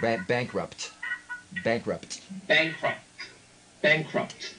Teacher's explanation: make that P with your lips and then make the T with your tongue it's not that hard really because they're two different articulators bankrupt